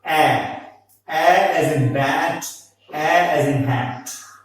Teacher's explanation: A is also a front vowel. It is unrounded and it is just below the half open line.